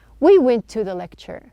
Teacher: We are not pronouncing two T's. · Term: linked or combined together